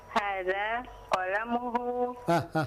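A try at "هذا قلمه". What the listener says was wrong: Kenapa jadi kolam? Kenapa jadi kolam?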